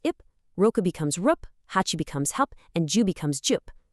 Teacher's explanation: When the numbers 1, 6, 8, and 10 meet counters that start with the P, B, K, S, or T sound, they geminate, they double up.